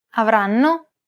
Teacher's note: Notice how each syllable is pronounced for roughly the same amount of time? The first N is held for roughly the same amount of time as all the other syllables.